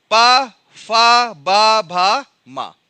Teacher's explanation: देखिए आपका कहां स्पर्श कर रहा है? होंठ स्पर्श कर रहे हैं।